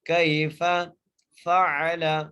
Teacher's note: یہاں پر یا لین کا قاعدہ ہے، کیف فعل، یہ تینوں حروف جو ہے بغیر جھٹکا دیے، بغیر کھینچے پڑھیں گے۔